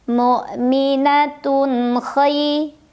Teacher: Tun ada izhar halqi maksudnya. Karena ada tanwin dhammah bertemu dengan huruf halqi atau tenggorokan ya, halqi itu huruf kha. Maka cara membaca tanwinnya dibunyikan dengan jelas. Jadi masih bunyi asalnya ya, bunyi an.